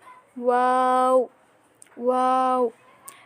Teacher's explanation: 2 ঠোঁট গোল করে শুরুতে গোল আবার শেষেও গোল